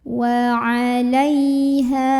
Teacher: Ha juga mad tabi'i karena ada alif yang sebelumnya fathah, maka haknya kita bunyikan panjang 2 harokat. · Lai ada huruf lin karena ada ya sukun yang sebelumnya didahului huruf yang barisnya fathah, maka ini cukup kita lembutkan.